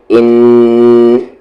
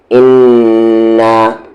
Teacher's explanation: جب بھی نون پر آپ کو تشدید نظر آئے یا میم پہ تشدید نظر آئے، وہاں پر آپ کو کیا کرنا ہے؟ غنہ، یعنی کہ وہاں پر آواز کو آپ کو ناک میں رکھنی ہے تھوڑی دیر، ان، اس طریقے سے، ان۔